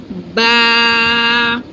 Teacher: This is the lower lip. We just meet our both lips and say ba.